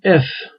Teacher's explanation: F de yine çok rahat söylüyorsunuz Boğazınızda bir titreme olmuyor